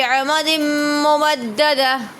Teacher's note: تنوین کے بعد میم آ رہا ہے تو ادغام ہو رہا ہے۔ ممددہ دال پر حرف قلقلہ ہے تو قلقلہ کریں گے۔